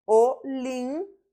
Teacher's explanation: A sílaba tônica está no pi, então é uma proparoxítona.